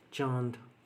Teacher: अनुनासिक में क्या होता है कि वायु नाक व मुख दोनों से निकलती है